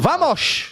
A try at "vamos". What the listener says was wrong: The sh at the end is a bit Portuguese, but